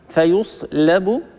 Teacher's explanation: اللام مستفلة، فنحافظ على ترقيقها لأن الترقيق هو مستحق استعلاء الحرف.